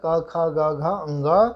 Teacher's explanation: कु यानी कि पूरा कवर क ख ग घ अंग, और उसके पश्चात ह, और उसके पश्चात विसर्ग, इनका उच्चारण स्थान कंठ होता है